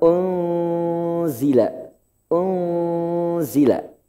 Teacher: Di situ nunnya, huruf nunnya, n-nya harus samar. Enggak boleh n-nya jelas. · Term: ikhfa